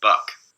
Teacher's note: So here's what the glottalized vowel sounds like. And with that glottal constriction and the velar constriction at the same time, what I'm going to get here is almost an ejective stop.